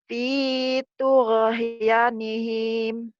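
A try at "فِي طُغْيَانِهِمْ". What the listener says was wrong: Ya-nya panjang. G-nya jangan dikolok-kolakan ya. Jangan tuge. Ya nihim.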